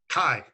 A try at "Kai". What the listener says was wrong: So it still sounds like a K. Do it farther back in the throat, right? So it should be it's very throaty. Again, it sounds like you're choking on something.